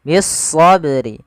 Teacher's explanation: kita namakan dengan alif lam syamsiah yaitu alif lam yang tertulis tapi tidak dibaca